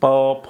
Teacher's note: नहीं तो फा पूछा जाए तो प फ ब, आप तुरंत जैसे बोलेंगे प फ ब भ म, तो देख रहे हैं दोनों ओंठ चिपक के बोल रहे हैं